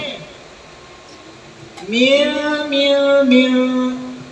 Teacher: দুই ঠোঁট আলতো করে লাগবে, মাঝখানে অল্প ফাঁকা থাকবে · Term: ইকলাবের কায়দা